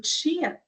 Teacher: vai haver essa obstrução completa no início da produção do som e vai terminar com uma liberação que nós chamamos de fricativa · esse tchã que eu pronuncio é considerado como africada